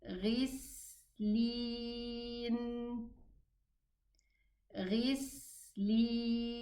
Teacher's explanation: the sin sukun has the soft character, meaning I'm gonna push the sin and allow it to flow